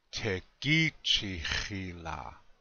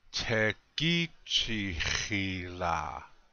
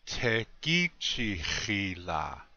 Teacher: Again, the accent is on the second syllable. Tekichihila.